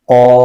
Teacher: قاف ایک تو موٹا حرف ہے، حروف قاف جو ہے یہ حروف مستعلیہ کا حرف ہے، اس کو پر کر کے پڑھیں گے، موٹا کر کے پڑھیں گے۔ اور الف سے پہلے زبر ہے، تو الف مدہ ہو رہا ہے، اس کو الف کھینچیں گے، ایک الف کی مقدار کھینچیں گے۔